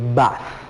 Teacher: aquí ya no son los dientes los que están dando este sonido sino que son nuestros labios al unirlos